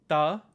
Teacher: this is voiceless because you don't need your voice to make that sound